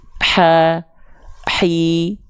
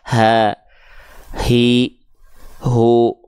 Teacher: itu dilafalkan dari atasnya Tengah tenggorokan ya tuh H kecil karakternya H kecil juga punya mengalir nafas sifatnya tapi karakternya berbisik